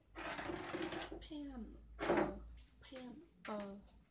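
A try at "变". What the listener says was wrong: Không phải là pen. Pen là chữ P thôi.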